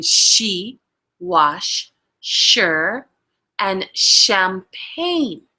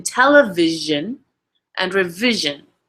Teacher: Okay, so usually if it has like an ION right after like an S, it has that sh sound. This is called palato-alveolar fricatives. So here, this F looking one is that voiceless, and then this will be the voiced sh.